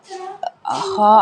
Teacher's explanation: خا ادا ہوتا ہے حلق کے اوپر والے حصے سے